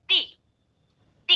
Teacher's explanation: کچھ لوگ تے پڑھتے ہیں، تے نہیں ہے، تی، تی کا ساؤنڈ ہوگا، تی. من الجنتی. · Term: معروف